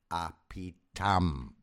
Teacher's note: you don't put the stress on the pi. You put the stress on the tam.